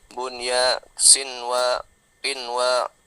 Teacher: jadi tidak dengung dia, tidak siwa tapi sinwa, normal bacanya. Jelas idzar wajib.